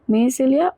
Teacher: there is a liaison, so the S at the end of mais is also pronounced